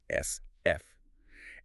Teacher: these are created by forcing air through a narrow opening which makes that sustained hissing sound or that friction-like sound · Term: fricatives